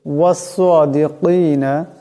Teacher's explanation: এখানেও সোয়াদ আছে, এই সোয়াদের আওয়াজটাকেও মোটা করিয়া পড়তে হবে